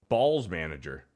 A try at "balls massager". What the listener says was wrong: You say ball massager. You said ball manager.